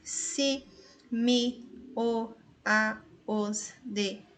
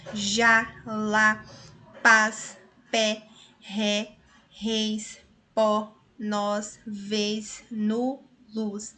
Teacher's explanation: os monossílabos átonos são pronunciados de maneira fraca. Agora, os monossílabos tônicos de maneira forte.